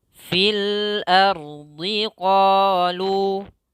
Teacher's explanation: Ro-nya tebal, a-nya tipis. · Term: Ro tebal